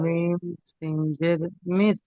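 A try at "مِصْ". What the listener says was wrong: সিন নয়, সিন এ সিন নয়, সা সা মিস।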